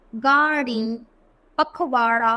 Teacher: तो ड और ढ को उत्सिक्त व्यंजन कहते हैं, क्योंकि इनके उच्चारण में जीभ को ऊपर उठाकर आगे की ओर फेंका जाता है। जैसे देखो, गाड़ी, पखवाड़ा, तो देखो ऐसा लग रहा है ना जीभ आगे पटक रहा है।